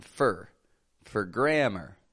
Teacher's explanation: I'm keeping the sound flat, quick. I'm not stretching that O out like a for grammar.